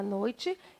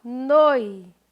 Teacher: A sílaba tônica da palavra noite é, ó, noi.